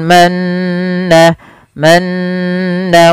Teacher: apabila adanya Nun berharakat tasdid atau mim berharakat tasdid maka ini harus dibaca dengan bacaan gunah yaitu memasukkan suara Nun atau mimnya ke rongga hidung kita